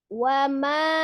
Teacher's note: Maka dihukumi adalah mad jaiz munfasil. Panjangnya 4 sampai 5 harakat.